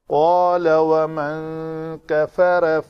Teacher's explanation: قاف پر حروف میں سے ہے، پر حروف کے بعد اگر الف آئے تو وہ الف پر ادا ہوتا ہے